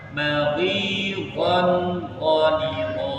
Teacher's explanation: kalau dia tanwin, kondisi tanwin nggak usah ditahan. Dia hukum tajwidnya idhar.